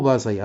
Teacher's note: وهنايا والله بصير بالعباد، إذا النبر هنايا والله بصير، هو بصير، هذا مقطع ثلاثي، النبر غيكون على الهاء وعلى الصاد